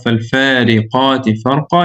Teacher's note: heavy alif mad here, pronounced heavy because of having the heavy qaf